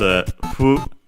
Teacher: hu, a bilabial fricative, and so closer to our f instead of an h